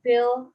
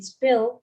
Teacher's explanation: pronunciation these two sounds are different the per sound in pill accompanied by slight puff of air that is an aspiration the pus sound in spill isn't accompanied by an aspiration then